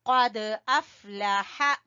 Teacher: قاف کو زبان کی جڑ سے ادا کریں گے